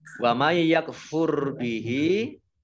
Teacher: nun sukun bertemu dengan huruf ya, bacaan idgham bi gunnah. Idgham masuk bi dengan gunnah, mendengung. Mendengung ya, ditandai yaknya ada tasdidnya.